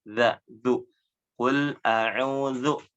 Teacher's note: Huruf dzalnya, ujung lidahnya digigit sama gigi atasnya.